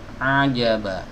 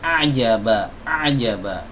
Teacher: Ain keluar dari lisanul mizmar ya, dari tenggorokan bagian tengah. Hati-hati jangan sampai masuk hidung. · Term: huruf ain